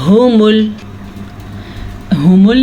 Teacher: अगर कोई इसको ऊ पढ़ेगा तो वो गलत पढ़ देगा, ठीक है। हुमुल, हाँ को आपने फिर से गले के आखिरी हिस्से से निकालना है, जो अंदर सीने की तरफ टच होता है